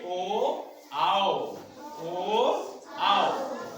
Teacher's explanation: ये दोनों के दोनों कंठ से निकल रहे हैं और ओठ भी हमारा उसी अनुसार गोल गोल घूम जा रहा है। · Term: कंठोष्ठ